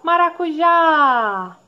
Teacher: Ela é oxítona, certo? Porque a última sílaba dela é a mais forte.